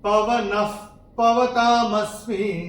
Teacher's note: विसर्ग के बाद जब प या फ आता है तो विसर्ग का उच्चारण होता है आधा फ। जैसे फूक मारते ना, फ, ये ऐसे करके आएगा।